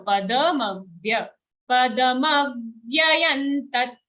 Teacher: Don't say padmavya, it's a full da.